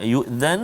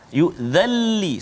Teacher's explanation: masukkan bunyi nun itu ke dalam lam tanpa dengung. Jangan yu'dhan, salah. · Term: Idgham bila gunnah